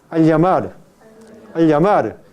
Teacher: el predorso de la lengua toca la región palatal